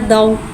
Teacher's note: दौद हुर्फ मुस्तआलिया है, लिहाजा इसकी आवाज़ हलक से मोटी अदा होगी। · वाव साकिन है, वाव साकिन से पहले ज़बर हो रहा है, वावलीन हो रहा है, लिहाजा वावलीन को बगैर खींचे बगैर झटके दे नरमी से मारूफ पढ़ेंगे और वावलीन को होठों की गुलाई के साथ अदा करके पढ़ेंगे